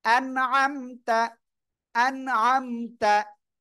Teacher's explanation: নুন সাকিনের পরে ইজহারের অক্ষর আইন, স্পষ্ট আকারে পড়বেন